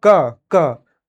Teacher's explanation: तो क में जैसे मैंने बोला क के पीछे दोस्तों साउंड आ रहा है अ का यानी अ की ध्वनि आ रही है